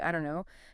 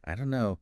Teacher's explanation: the don't and no just merge